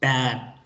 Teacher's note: Usted siente como unas lomitas. Ahí la punta de la lengua se queda en la D.